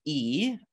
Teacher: would be described as a close front unrounded vowel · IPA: /i/